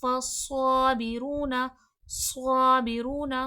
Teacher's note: स्वाद हुफ मुस्तालिया है मोटा हर्फ है मोटा करके पढ़ा जाएगा और सख्ती सीठी के साथ भी पढ़ा जाएगा क्योंकि यह हुरफे सफीर भी है। · صاد حرف مستعلیہ ہے، موٹا حرف ہے، موٹا کر کے پڑھا جائے گا، اور سختی سیٹھی کے ساتھ بھی پڑھا جائے گا کیونکہ یہ حرف صفیر بھی ہے، ٹھیک ہے۔